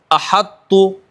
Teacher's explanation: ادغام ناقص ہوگا، کیونکہ تو کی صفت باقی رہ رہی ہے